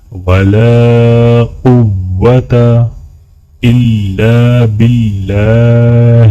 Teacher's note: یہاں پر اللہ کے نام کو باریک پڑھا جائے گا۔